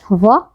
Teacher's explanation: अगला है दंतोष्ठीय, अर्थात दंत और ओष्ठ दोनों की सहायता से हम इसका उच्चारण करते हैं, तो इसे हम लोग याद रखेंगे व, जिसका उच्चारण स्थान है दंतोष्ठीय।